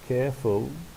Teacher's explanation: it consists of two syllables. The stress is on the first one.